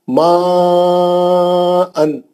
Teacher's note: एक ही कलमे में मद्दे असली है और हमजा ओरिजिनल शक्ल में मद्दे मुत्तसिल है, 4 हरकत से पढ़ी तो सही है